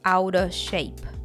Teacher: Pay attention to the connected speech here. The off gets reduced and linked to out.